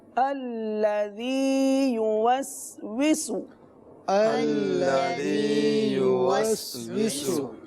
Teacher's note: یہاں پر سین ہے، 2 بار سین آ رہا ہے، تو دونوں سین کو واضح کر کے سین کی سیٹی کے ساتھ پڑھیں گے